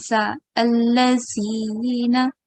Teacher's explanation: Okay, they have a hissing sound. The tip of the tongue should touch the upper front teeth. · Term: zal